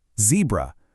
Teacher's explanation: Remember, a crisp Z sound, not jebra.